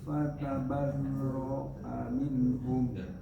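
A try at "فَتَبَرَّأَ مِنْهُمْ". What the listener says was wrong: fanatabarro'a, naknya kurang.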